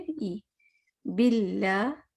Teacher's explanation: بل میں اے sound نہیں ہونا چاہیے، ای ساؤنڈ ہونا چاہیے